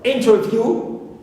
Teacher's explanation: For example, I can mention here the word interview, view, ends with the long vowel u, clear? But here I stress the first syllable, in, although the last syllable contains a long vowel